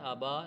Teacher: کچھ لوگ ابھی پڑھتے ہیں، ابھی نہیں ہے، کھڑی زبر ہے، ابا لمبا کر کے پڑھیں گے